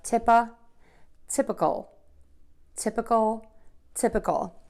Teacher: So the mistake that I hear is most people say typical, and that's incorrect because oftentimes in English, in longer words, that middle letter I becomes the schwa syllable